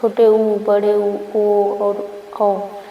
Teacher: फिर अगला है वृत्तमुखी, यानी कि इसमें वर्तुल मतलब वृत्त होता है, इसमें मुंह पूरा गोल हो जाता है